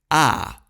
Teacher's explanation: если рот открыт широко, язык опущен – это максимальная сонорность.